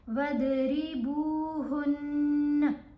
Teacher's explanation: آپ کو پتہ ہے جب تشدید نون کے اوپر ہوگی یا میم کے اوپر تو ہم نے غنہ کرنا ہے، اب یہاں غنہ کر کے وقف کیا جائے گا، وَضْرِبُوهُنَّ، زبر نہیں پڑھنی لیکن غنہ کرنا ہے۔